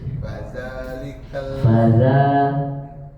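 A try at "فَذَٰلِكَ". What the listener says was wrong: Faza bukan, kurang tipis. Bukan faza.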